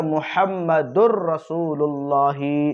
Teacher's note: را کے اوپر جو متحرک تھا تشدید آ گئی · تنوین ہے، تو وہ کیا ہے اصل میں محمدن، پھر اس کے آگے رسول اللہ، لیکن اس کو ایسے نہیں پڑھیں گے بلکہ کیا پڑھیں گے؟ محمدر، تو یہ دال کے دو پیش سے را میں جو ہے اس تنوین کا ادغام ہو جا رہا ہے، یعنی نون جو ہے را سے ہی بدل جا رہا ہے